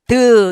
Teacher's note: 혀 끝에서 나는 소리